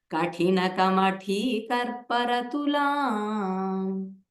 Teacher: there is a good chance Ka will get Mahaprana. Make sure only Tha gets the Mahaprana.